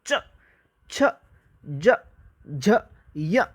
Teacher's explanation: जोर से थोड़ा संघर्ष सा महसूस होगा आपको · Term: स्पर्श संघर्षी